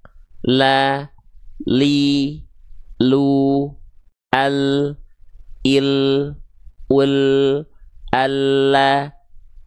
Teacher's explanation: ketika kita melafalkan huruf lam, yang disentuhkan itu adalah samping lidah depan kanan dan kiri, ya. Keduanya menyusur sampai ke ujung lidah.